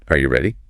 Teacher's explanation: For yes-no questions, we use rising intonation. Are you ready? The pitch goes up at the end.